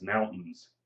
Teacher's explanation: mountains is a big one we don't say the t we don't accentuate the i and the a it's mountains